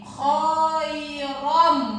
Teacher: tanwin menghadapi huruf mim, maka cara membacanya bukan khairon, tapi bunyi an ini dirubah ke huruf yang di depannya menjadi khairom. Nah, tanwin menghadapi huruf mim itu yang disebut dengan hukum bacaan idgham bi gunnah.